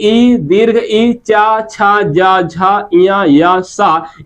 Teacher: इन सभी का उच्चारण स्थान क्या है भैया? तालु है, या इसी को तालव्य भी कहते हैं।